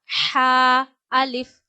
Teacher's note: ह गले के दरमियान से अदा होता है।